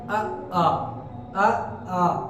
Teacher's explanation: छोटा आ और बड़ा आ जो होता है वो कंठ से बोला जाता है